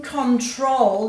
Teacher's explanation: in control you've got a long o sound on the second syllable and the emphasis is on the second syllable